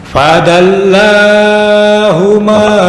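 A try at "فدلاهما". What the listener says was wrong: Kepanjangan. Jangan panjang-panjang. Ini hanya 2 harokat. Fadallahuma bighurur.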